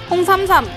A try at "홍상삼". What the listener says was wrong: 아 홍삼이 아니라고요. 홍상삼이라고요.